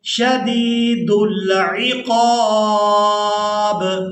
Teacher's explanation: اب یہاں پر بھی ہم نے کرنا ہے وقف، تو وقف کی صورت میں با جو ہے یہ ساکن ہو جائے گی، یہاں پر بھی قلقلہ کے ساتھ ادائیگی کریں گے